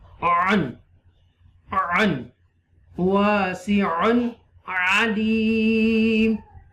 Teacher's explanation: clearly this un sound, okay, because after tanween, throat letter ain is appearing, ain is coming